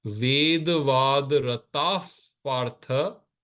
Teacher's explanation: visarga comes before pa, the sound comes as if it becomes a fa. This is called the upadmaniya.